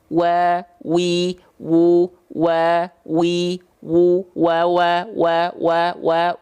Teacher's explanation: Apa artinya kedua bibir diapain lfatil W Baun mimu bibirnya dimonyongkan kedua bibir dengan posisi maju seperti mengucapkan huruf u Nah gini maju Bib nya mencucu monyong muncung ya Oke coba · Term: huruf wau